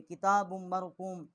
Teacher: با کو جو ہے میم کے ساتھ مشدد کیا ہے اور یہاں ہم نے غنہ بھی کیا ہے